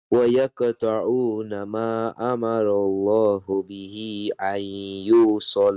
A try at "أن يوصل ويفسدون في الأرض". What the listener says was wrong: Lam should not be stretched even a little bit. أن يوصل ويفسدون.